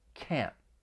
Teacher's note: most people are going to say this with that nasal sound and then follow it with a stop T. So your tongue is going to come up behind your top front teeth and block the flow of air.